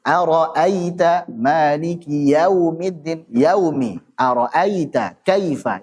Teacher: Sifat lin ini tidak dibaca panjang.